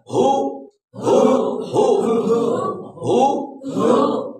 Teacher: ہا کا مخرج انتہائی حلق, انتہائی حلق ہے.